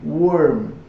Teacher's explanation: Essa entonação é bem decrescente